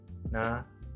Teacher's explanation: Fonem N, cara artikulasinya nasal dan letak artikulasinya alveolar